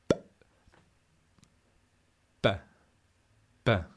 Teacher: prima dell'esplosione c'è un momento in cui il passaggio d'aria è bloccato